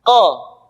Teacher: diucapkan dengan cara menyentuhkan pangkal lidah kita dengan langit-langit bagian belakang